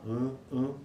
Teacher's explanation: porque o ar ele passa pela cavidade nasal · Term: vogais nasais